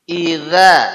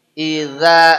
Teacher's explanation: lidah ini ujungnya nempel di gigi di atas getarkan kalau enggak getek enggak jadi ya mesti getek d dan tidak